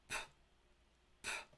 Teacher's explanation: Klingon has an unvoiced labial aspirated stop, represented by the Latin letter P, pronounced p, p.